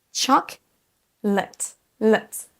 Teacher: la deuxième syllabe, c'est un son schwa. Chocolate, let. C'est un son E qu'on entend à peine.